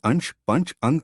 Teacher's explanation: अनुस्वार एक व्यंजन ध्वनि है। इसके उच्चारण में नाक से अधिक सांस निकलती है और मुख से कम